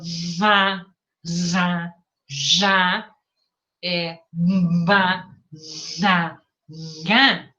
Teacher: eu escutei a hipernasalidade, porque a energia acústica passou pela cavidade nasal, e eu também escutei escape de ar nasal, porque, ó, escapou ar também.